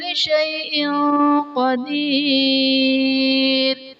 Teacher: شیئن قدیر میں حمزہ کے نیچے دو زیر کی تنوین، تنوین کے بعد حروف اخفا میں سے قاف آ رہا ہے تو یہاں پر اخفا کا قاعدہ ہوگا، یعنی تنوین میں ہم غنہ کر کے پڑھیں گے